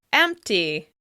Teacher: the word empty now includes the /p/ sound in the middle of the word